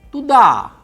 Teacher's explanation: unstressed u is pronounced for a shorter duration